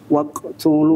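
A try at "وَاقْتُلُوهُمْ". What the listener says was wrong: Waqo. Jangan diputus. Baik, ini sering ya untuk qalqalahnya qaf ini ketika sughra jangan diputus.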